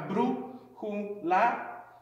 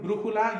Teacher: And when you say the word all the way through, brújula, you'll notice that the third syllable is the one that has the most emphasis. And like we mentioned, it always has a written accent.